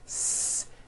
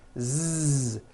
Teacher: the S sound become it would become a z sound Z so s has no voicing s z has voicing Z so we say the S sound and the Z sound are